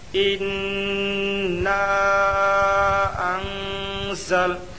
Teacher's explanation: انا انزل، ان میں اخفاء حقیقی ہوگا، نون ساکن کے بعد حروف اخفاء کے 15 حرفوں میں سے زا آیا، اس لیے نون ساکن کی آواز کو ناک میں چھپا کر پڑھنا چاہیے۔ اخفاء کی مقدار ایک الف ہے۔